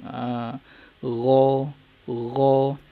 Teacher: Dia pakai hujung halkum, hujung kerongkong.